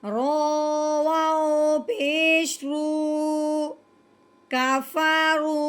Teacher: جب واؤ ساکن ہو اس سے پہلے حرف پہ پیش آ جائے تو پہلے حرف نے اس کے ساتھ ملنا تو ہے ہی، لیکن ساتھ ساتھ ایک الف کے برابر لمبا ہوگا